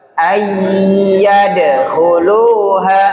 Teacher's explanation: Kol-kolah itu pantul, bukan tertahan.